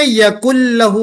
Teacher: یکن لہو ہے، اس نون کو ہم کس میں ملا رہے ہیں؟ اس کو ہم لام میں ملا رہے ہیں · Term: ادغام کامل